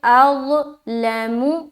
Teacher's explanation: ضا، یہ حرف ضا ہے۔ ضا کو موٹا کر کے ادا کرتے ہیں، سیٹی کی آواز نہیں آنی چاہیے۔ ضا جو ہے یہ حرف مستعلیہ میں سے ایک ہے، لہٰذا اسے موٹا ادا کریں گے۔